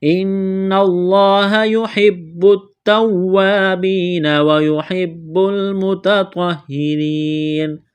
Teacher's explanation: نون مشدد ہے، غنہ کریں گے، آواز ناک میں چھپائیں گے، لفظ اللہ کے نام سے پہلے زبر ہے، لفظ اللہ کے نام کو موٹا کرنا ہے